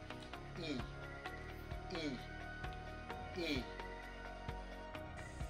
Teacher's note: bahagi ng ating dila e e e ang ponyang e ay nasa harap na bahaging dila at mataas na posisyon ng dila